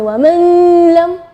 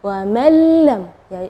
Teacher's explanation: Ya, di situ kita bacanya wa mallam ya, jadi huruf nunnya tidak ada, atau kita dibilang idgham ke huruf berikutnya dan gunnahnya tidak ada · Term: idgham bila gunnah